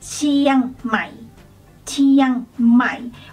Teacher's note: When you go low, do not raise the tone before going low. Just straight low. · So when you say Mai, just drop the tone, just go low.